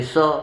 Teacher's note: लेकिन खास करके हमारे यहाँ बिहार में ये नियम है कि सबको एक दंते स लोग बोलते हैं, चाहे तालब स हो चाहे मूर्धन्य श हो, सबको कहेंगे स।